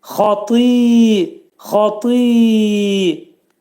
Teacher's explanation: Ta hərfinin məxrəci dil damağa dəyər-də dəyməz vəziyyətdə qalın ta hərfini deyəcəyik. Tadan sonra gələn i ılaşacaq